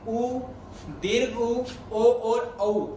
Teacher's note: ये 4 ऐसे स्वर हैं जिनके उच्चारण में मुख आपके होंठ गोलाकार बनता है